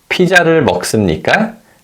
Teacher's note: say the question with a rising tone at the end